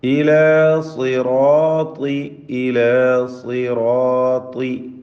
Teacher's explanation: എല്ലാം തഫ്ഖീം ചെയ്ത് ഉച്ചരിക്കേണ്ട അക്ഷരങ്ങളാണ്. സ്വാദിനും ത്വാഇനും കസ്റായതിനാൽ കുറഞ്ഞ തഫ്ഖീം മാത്രമാണ് നൽകുക. തടിപ്പിച്ച് ഉച്ചരിക്കുക ഈ അക്ഷരങ്ങളൊക്കെ.